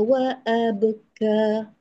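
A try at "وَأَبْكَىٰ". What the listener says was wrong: Haka ada suara mengalir. Abka tu beka. Dia tersangkut dekat kaf. Wa abka jangan sangkut kat kaf.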